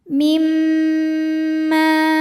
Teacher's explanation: Cara bacanya dengung, bunyi m-nya tahan sampai ada suara masuk hidung kurang lebih dua harakat. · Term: ghunnah musyaddadah, gunnah musyaddadah